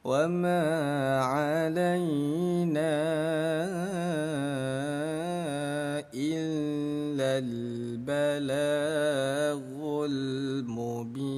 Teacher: Wa ma 'alaina dipanjangkan 5 ketukan ya